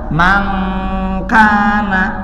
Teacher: Ini jauh dari bunyi n. Kalau n kan di depan na. Kaf dan kop di pangkal lidah. Ya. Maka ketika mankana dibaca mangkana, ang asli.